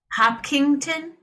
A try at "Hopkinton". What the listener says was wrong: Hopkin, no G, Ton. Hopkinton.